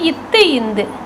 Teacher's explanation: மேல்வாய் பல்லினது அடியை நாக்கின் நுனி பொருந்துவதால் இந்த எழுத்துக்கள் தோன்றுகிறது